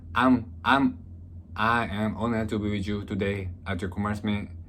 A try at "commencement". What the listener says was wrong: You still pronounce R. Commencement. Yeah, you're thinking of a different word. That's commencement. I think that's commencement. But this is commencement without the R.